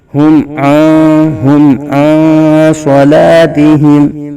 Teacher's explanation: نون ساکن میں اخفاء ہوگا یعنی غنہ کر کے پڑھیں گے